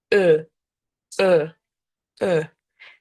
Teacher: Ви ніби хочете сказати е, але тут в горлі. І при цьому ви робите губи трубочкою.